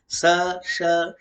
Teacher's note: दंत स, फिर तालव्य श, फिर मूर्धन्य श